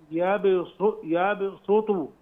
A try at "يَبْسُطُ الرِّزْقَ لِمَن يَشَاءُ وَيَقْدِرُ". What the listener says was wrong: لان انا سامعها صاد، تقول يا باسوتو، لا يا باسو.